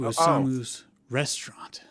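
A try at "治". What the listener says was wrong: Sounded like you said Osama's restaurant.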